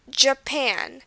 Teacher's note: It's not Japan, which is what it might look like, but it's Japan. And you can tell it stresses on the pan part of it.